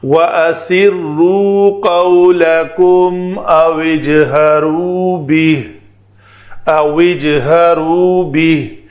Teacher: او کا واو ساکن اور جیم ساکن اکٹھے آئے تو پہلے ساکن کو کسرہ دیا۔